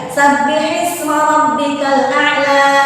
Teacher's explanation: Ya, jadi jangan direm di ujungnya. Kalau direm ujungnya itu seolah-olah ada huruf hamzah, padahal tidak ada huruf hamzah. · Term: dialirkan